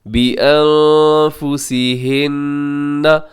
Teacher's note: اب یہ جو لفظ ہے نون مشدد، یہاں پہ غنہ آپ کریں گے، آواز کو ناک میں لے کے جائیں گے